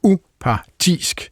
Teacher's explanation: udtalt med tryk på både u og tisk, så bliver det upartisk